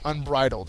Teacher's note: it is an adjective and the second syllable is accented